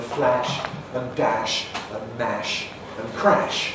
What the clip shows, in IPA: flæʃ